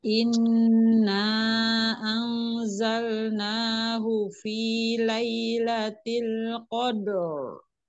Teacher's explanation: Nun bertasdid, jangan lupa dia wajib gunnah. Ya, kalau nun ada tasdidnya wajib didengung. Ya, ditahan dengungnya, ditahan 2 harokat ya.